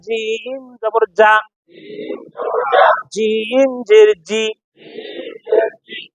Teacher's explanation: জিম জিহ্বার মাঝখান থেকে শক্তভাবে আদায় হবে